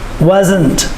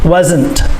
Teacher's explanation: The S makes the Z sound, and you must make the T sound.